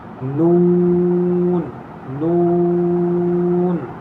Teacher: یہاں ہونٹوں کو گول کریں گے اور ناک میں آواز لے جا کر نہیں پڑھیں گے، منہ سے پڑھیں گے. جیسے بہت سارے لوگ پڑھتے ہیں نون نون، تو ایسے نہیں پڑھیں گے بلکہ نون نون ایسے.